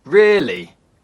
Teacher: A falling tone can indicate disbelief.